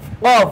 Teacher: জিব্বার গোড়া তার বরাবর উপরে তালুর সঙ্গে লাগাইয়া দুই নক্তওয়ালা কফ